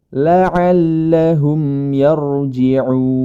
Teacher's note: huruf ro berharakat sukun yang didahului dengan fathah pada huruf ya maka huruf ro tersebut dibaca tebal